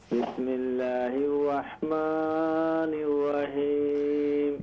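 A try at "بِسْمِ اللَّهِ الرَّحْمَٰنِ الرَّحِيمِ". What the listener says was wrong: بسم اللہ الرحمن الرحیم، ہا کو درست کریں۔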